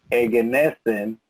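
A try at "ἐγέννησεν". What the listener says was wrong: El acento está en la épsilon.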